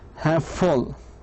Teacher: the middle consonant sound is shared so perfectly with both the first and the second words that we cannot tell that the consonants occur twice